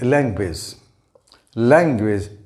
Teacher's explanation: notice that i pronounce the first syllable a bit louder and longer than the following syllable this extra emphasis or force given on a particular syllable is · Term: stress